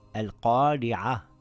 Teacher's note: If the Ra has a kasra, it will read light. It is just like when you smile, ri.